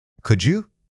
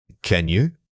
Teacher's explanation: The slight shift in intonation that comes with could adds a layer of politeness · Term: Politeness and hypothetical tone